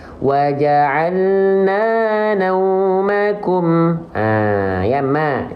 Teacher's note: karena mimnya berharokat fathah dan vokalnya tidak jadi o, maka dia huruf yang tipis ya.